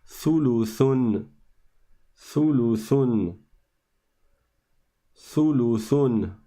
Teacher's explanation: il faut sortir la langue entre les dents et de sorte à ce qu'elle tape sur les dents du haut. Sa, comme I think en anglais. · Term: tha